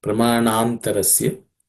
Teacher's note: Pramana antarasya becomes pramanantarasya. The na and a becomes na. The na becomes longer.